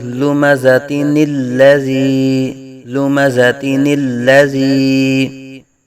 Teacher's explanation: اس نون کو آگے والے الذی کے ساتھ ملا کے پڑھا جائے گا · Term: نون قطنی